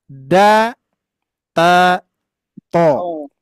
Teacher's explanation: pertemuan ujung lidah ini bertemu dengan gusi gigi seri atas